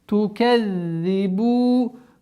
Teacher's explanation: Удвоение за с касрой